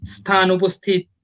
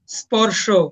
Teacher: দন্তস এবং তালব্যস এর উচ্চারণ ইংরেজি এস এর মত উচ্চারণ হবে